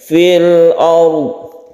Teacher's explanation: Mengenai roknya karena sebelumnya fathah maka dibaca rok tebal atau tafkhim